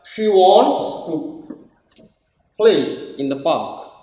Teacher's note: play and park they are content words and they are stressed on the other hand she too in the these are not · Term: rhythm